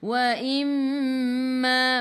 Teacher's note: mim ada sabdu, tekan ke dalam mim dan dengung 2 harakat wajibul gunnah, wajib dengung. Ma 2 harakat ada alif mad asli.